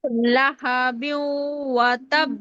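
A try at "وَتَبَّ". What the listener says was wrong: শক্ত হবে তো আপু। এই অনুশীলনটাই তো হচ্ছে কলকলার হরফটি ওয়াকফ অবস্থায় তাসদীদ হলে শক্ত হবে। লাহাবিন ওয়াতাব।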